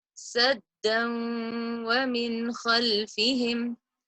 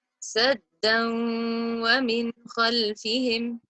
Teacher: I didn't say saddan. I dropped that noon and I merged the sound of the 2 words, but held the nasalization for 2 counts.